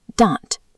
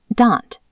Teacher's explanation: Though nearly identical in spelling, shifting your tongue from dental to retroflex changes the meaning from tooth to scolding